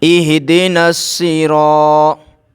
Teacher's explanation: یہاں پر زبر ہے تو را کو موٹا کر کے پڑھیں گے